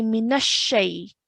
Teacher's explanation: And then we have the correct way of saying it, which is mina shay. So we're really, really emphasizing pressing down on the sheen when we join it to the noon.